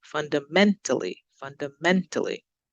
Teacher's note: right stress so let's look at the first one fundamentally so we're going up on the men